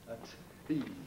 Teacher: a tease has full aspiration of the T